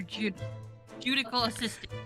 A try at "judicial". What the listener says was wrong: Judicial. There has been the word judical sometimes, but this is judicial. It has that second I in it.